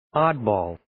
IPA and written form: 'ɑːd,bɔːl (Oddball)